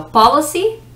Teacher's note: policy, the emphasis, the stress of the syllable is the first. The first syllable is where you put the stress.